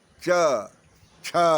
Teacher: थोड़ा च में भी जरा ह कंठ वाला भी लग गया तो बन गया छ